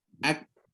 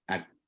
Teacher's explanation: Di mana kalau qaf dia dalam lagi, kalau kaf dia depan sikit. Pangkal lidah juga, bukan benda lain.